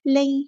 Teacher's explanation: نون ساکن کے بعد یا آیا ہے تو ادغام مع الغنہ ہو رہا ہے، یہاں پر ایک الف کے برابر رکیں گے.